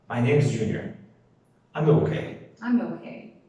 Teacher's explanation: Agora a entonação para as respostas, ela sempre desce no fim da frase.